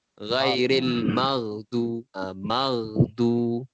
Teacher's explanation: Kita sebut perkataan ghairil maghdu tu ada getaran sikit kat huruf ghain tu. Ghain dia mati tu kan.